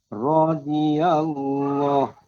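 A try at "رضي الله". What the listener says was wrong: Iya. Terus alhamdulillah sudah mulai ini.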